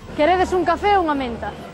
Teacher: no tonema final, en vez de subir, como no castelán, baixa aínda máis do que baixa a enunciativa